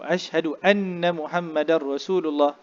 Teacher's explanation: Wa ashhadu anna pada nun. Jadi pada nun bila tasydid dia mesti wajib kita dengungkan